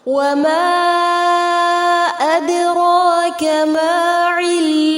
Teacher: وما أدراك مد منفصل ہوگا 3 سے 4 حرکات جتنا لمبا کیا جائے گا. را کو پر کریں گے، دال ساکن پر قلقلہ ہوگا.